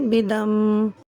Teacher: ودا من وقف کی صورت میں بدم ہو جائے گا، دو زیر کی تنوین ختم ہو جائے گی اور میم کے اوپر جزم لگ جائے گا. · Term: حالت وقف